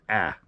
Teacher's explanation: I tend to slightly alter the alpha so it's pronounced a little bit more nasal